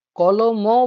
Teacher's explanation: ক এর সঙ্গে অসছে ল এর সঙ্গে অ আসছে। ম এর সঙ্গে কিন্তু অ আসছে না। · কলম শব্দে ক সম্পূর্ণরূপে উচ্চারিত হলো। ল সম্পূর্ণরূপে উচ্চারিত হলো। কিন্তু ম সম্পূর্ণরূপে উচ্চারিত হলো না। এখানে মটা আমরা বলব যে হ্যাঁ ব্যঞ্জন ধ্বনি আছে কিন্তু এ সম্পূর্ণরূপে উচ্চারিত হলো না। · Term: ম হসন্ত